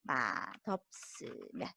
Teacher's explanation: 우리 비읍 받침 뒤에 시옷이 오면 쌍시옷으로 소리가 납니다.